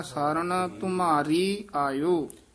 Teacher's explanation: ਮਮ ਨੂੰ ਭਾਰਾ ਕਰਨਾ ਰਾਰੇ ਨੂੰ ਭਾਰਾ ਨਹੀਂ ਕਰਨਾ